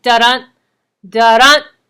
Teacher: There's an emphasis on the second part, which is the stress, the second syllable. · the emphasis is placed on the second syllable of each metrical foot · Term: iambic